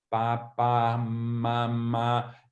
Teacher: as primeiras sílabas são as bilabiais